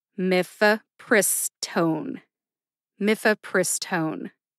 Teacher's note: emphasis there are two syllables myth and pris get the emphasis pris gets the most emphasis see if you can hear it